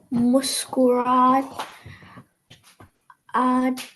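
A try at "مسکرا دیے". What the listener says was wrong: Okay, this one ends here. Muskura with alif, then diye.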